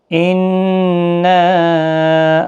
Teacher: نون مشدد پر غنہ ہوگا